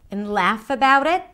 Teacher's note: And notice what happens to the pitch. It goes up.